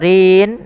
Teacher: di sini ro-nya tipis karena dia harokat kasrah